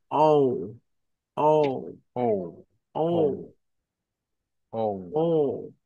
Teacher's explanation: বাংলা বর্ণমালার যে ও, আমরা যে উচ্চারণটা করি একদম মুখটা গোল করে